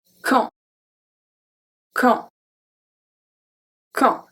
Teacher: we don't pronounce the U, we don't pronounce the D, and AN makes the sound en